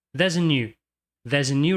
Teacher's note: Perceba como é Sutil a presença do artigo entre there e new